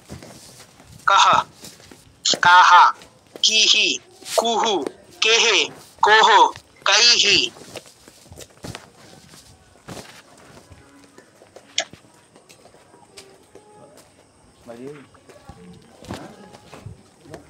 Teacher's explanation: এবং পুরো হ না যে কাহা বলে ধরে রাখতে হবে সেরকম না, কাহা ছেড়ে দিব, অর্ধ হ, অর্ধ হের মতো হালকা করে ছেড়ে দিব বাতাসটা।